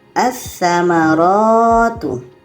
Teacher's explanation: Jadi lam ini tidak kita baca menjadi bacanya assamaratu. Assamaratu lamnya tidak kita baca karena tsa ini adalah huruf alif lam syamsiyah. Assamaratu lam ada pada tulisan tapi tidak ada [berdehem] pada bacaan.